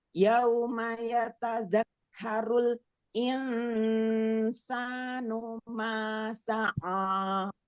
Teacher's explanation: Sanya jangan dipanjangin. Hanya satu harakat ya saja.